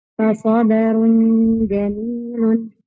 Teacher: tanwin bidhammi mukhfah inda al-jimil maftuha bi gunnah harakatain